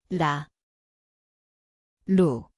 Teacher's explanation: 리을, Zvuči kao R _, litara. Mjesto je vrh jezika, lagani dodir.